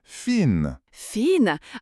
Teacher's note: Fin, c'est prononcé fin avec le i long.